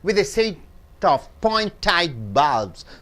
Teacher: So what you have seen here, right side is, in a word, if T comes in between the word and followed and preceded by vowels, the T is pronounced as D, and at the end of the word T comes, T is held up in your tongue. It is not split it out.